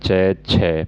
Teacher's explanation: स्पर्श का समय इनमें ज्यादा है और उच्चारण के बाद वाला भाग है वो संघर्षी हो जाता है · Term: स्पर्शी संघर्षी व्यंजन